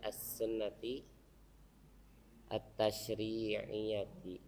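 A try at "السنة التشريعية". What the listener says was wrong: Ya, harusnya ada tasdid ya.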